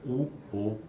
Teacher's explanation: U, O, que são vogais posteriores, lá para o fundo da boca, da língua, vai lá pra, ela se movimenta para lá, mas elas também são arredondadas.